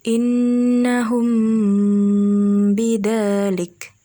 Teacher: Hukum dari ikhfa syafawi itu dengan cara menahan huruf hijaiyah mim secara samar-samar. Sehingga ketika akan bertemu dengan huruf hijaiyah ba, maka bibir atas dan bibir bawah dalam posisi yang tertutup